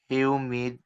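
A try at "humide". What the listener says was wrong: হিউমিড না উমিদ এই silent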